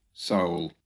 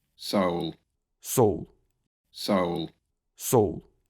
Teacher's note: В английском слове стоит дифтонг, goat, за ним идет темный «л» и оттягивает козу назад.